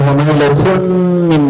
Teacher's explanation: من الميم بعدها ميم. إدغام متماثلين